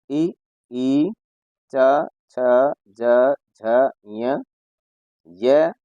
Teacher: ये सभी वर्ण जो है वो तालु से बोले जाते हैं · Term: तालव्य वर्ण